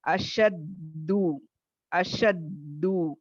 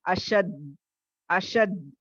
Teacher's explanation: لیکن اب اس کلاس پہ آپ صرف اتنا یاد رکھیں، یہاں پہ خلخلہ نہ ادا کرتے ہوئے یا اپلائی نہ کرتے ہوئے اگر ہم اشدو یا اشد تو پڑھیں گے تو آپ دیکھیں گے آواز میں سختی بھی ہے، مخرج میں ٹھہرنا، اور اس کی وجہ سے آواز وہاں پہ سڈن سٹاپ ہو رہی ہے